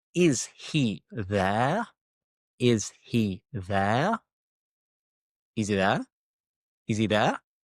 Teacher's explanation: So, again, we're dropping the H